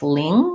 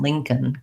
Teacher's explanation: The lin is actually like this, ling with the NG sound. And then this C-O-L-N just sounds like a K and an N, Lincoln.